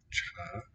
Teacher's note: Cha sounds like first tone there